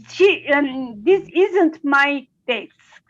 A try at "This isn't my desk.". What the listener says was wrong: Yes, okay.